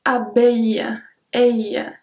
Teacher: we don't pronounce the L, we say abeille.